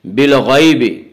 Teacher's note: بالغیب، یا لین، یا لین اس یا کو کہتے ہیں جو یا ساکن ہو اور اس سے پہلے زبر ہو، اور یا لین کو نرم آواز کے ساتھ جلدی پڑھیں گے · حروف مستعلیہ 7 ہیں جو ہمیشہ ہر حال میں پر پڑھے جاتے ہیں، اس لیے غین کو پر پڑھیں گے